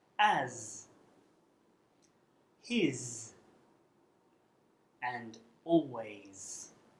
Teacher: it's a sibilant which is a sound made by directing a stream of air with the tongue towards the sharp edge of the teeth to produce the sound clench your teeth lightly together and put